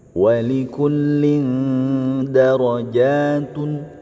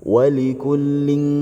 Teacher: disamarkan antara tanwin dengan Dal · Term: ikhfa